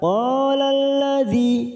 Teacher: masuk pada al-samsiyah, fokus pada huruf lam yang bertasdid